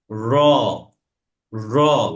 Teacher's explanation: তাহলে রড যখন উচ্চারণ হবে তখন সেটা হালকা কম্পন সৃষ্টি হবে। এবং আমার যে জিহ্বার যে আগা, সেই আগাটা হচ্ছে আমার যে উপরের দাঁত, সেটা গোড়ার সাথে লেগে যাবে।